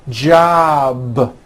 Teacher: a voiced sound job it's not J with an unvoiced P keep the voicing going throughout the whole word job with a voic B ending same thing with robe also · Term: voiced B ending